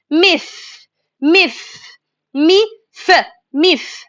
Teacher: Letter meem is articulated from the lips when it's closed together and the sound comes from nose. When the lips close together and the sound comes from nose.